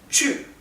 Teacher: se pronuncia eh les dije que se pronunciaba como una u en realidad se pronuncia como una u es más parecida a la u umlaut